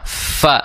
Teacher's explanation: makhraj huruf fa itu di ujung gigi seri atas bertemu dengan bibir bawah